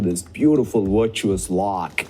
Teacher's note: When a word has multiple sounds that are accent patterns for you, for example, as he says virtuous, that's the only place I heard the V sound a little bit accented, between a W and a V sound. It's probably because he also has to say the right after the V, virtuous.